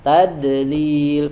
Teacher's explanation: huruf dod itu banyak yang dipantulkan. Tadlil padahal tidak boleh dipantulkan, dia harus menempel di makhrajnya dan alirkan suaranya.